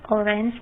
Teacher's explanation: In the word orange, the stress is on the first syllable